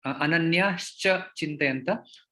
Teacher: यदि आप देखेंगे तो विसर्ग का यहाँ पे श बन जाता है